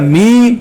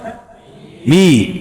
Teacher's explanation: میم کے اندر حرف غنہ ہے لیکن یہاں میں آواز ناک میں نہیں جائے. می غلط.